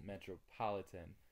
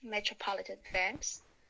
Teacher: the stress is on the third syllable